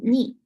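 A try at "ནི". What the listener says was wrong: Not ni. Ni. You have to put your tongue on the roof of your mouth. Ni.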